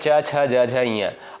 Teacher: इनका उच्चारण स्थान जो होता है तालु होता है